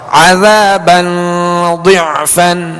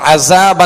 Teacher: ذال کو نرمی کے ساتھ، اس میں سیٹی کی آواز نہیں آئے گی یعنی عذابا نہیں پڑھیں گے ورنہ ذال زا میں تبدیل ہو جائے گی، بدل جائے گی.